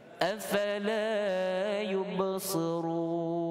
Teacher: Ini selemah-lemah huruf isti'la ni kerana berbaris kasrah. Jadi kita baca tebal tapi dalam keadaan kasrah. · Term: Huruf sad